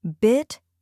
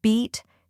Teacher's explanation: The first sound in each pair is shorter. The second is longer.